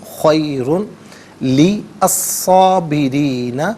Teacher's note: ساکن کو پر کر کے پڑھیں گے، لَهُوَ، لَهُوَ خَيْرٌ لِلصَّابِرِينَ، خیرن میں را پر دو پیش کی تنوین ہے، اس سے لام کے ساتھ ملائیں گے، لام کی آواز کو ادا کیا جائے گا